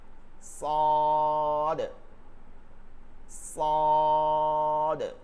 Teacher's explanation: সিন আর সদ একই মাখরাজ, শুধু মোটা হবে